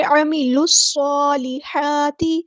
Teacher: صاد ہمارا heavy letter ہے، اس کو پورا ادا کریں گے. صاد میں سٹی بھی آئے گی اور صاد مشدد ہے تو اس کو جماؤ کے ساتھ اسٹرینتھ کے ساتھ ادا کرنا ہے. صاد پہ کھڑا زبر ہے تو مد اصلی کریں گے. · لام شمسیہ اس لیے ہم اس کو ظاہر نہیں کریں گے، عامل نہیں پڑھیں گے.